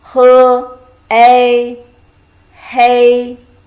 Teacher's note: He, hei, first tone. So when you say a coffee is dark, we call hei.